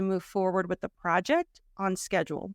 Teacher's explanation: notice that I emphasize project by slowing down